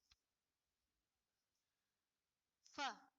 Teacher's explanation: Pertanyaan berikutnya. Sebutkan huruf yang makhrajnya ujung dua gigi seri atas dan bagian dalam bibir bawah